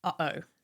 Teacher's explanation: it's a brief pause or catch in the throat, like the break in uh-oh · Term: glottal stop